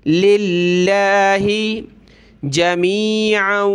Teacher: لفظ اللہ سے پہلے لام پہ زیر ہے تو پتلا کریں گے